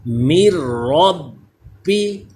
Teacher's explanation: با مشدد ہے, حروف کلکلا ہے با اور تشدید ہے اس پہ, تو اس میں جماؤں کے ساتھ کلکلا کرنا ہے